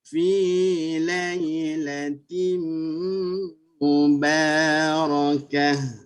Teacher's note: mesti bunyi T dulu. Baru dirapat dua bibir.